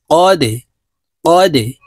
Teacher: কলকলার হরফ নিচের দিকে ধাবিত করে ধাক্কা দিয়ে উচ্চারণ করতে হবে